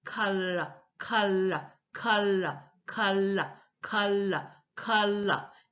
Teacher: I'm literally taking the tip of my tongue and sliding it back into L